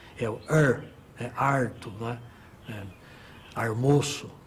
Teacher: o famoso R retroflexo, que é típico da área caipira